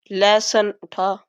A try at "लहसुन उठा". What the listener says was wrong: लहसुन ठा आ रहा है, उठा नहीं आ रहा है।